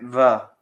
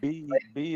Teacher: b is bilabial with both lips